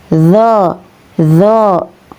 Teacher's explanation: Keluar dari ujung lidah yang menempel dengan gigi seri atas ya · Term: huruf zo